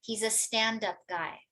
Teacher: the first part, let's say in this case, stand, right, will receive more stress